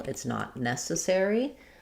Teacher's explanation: Necessary. So the main stress in this phrase is going to be on the ne syllable.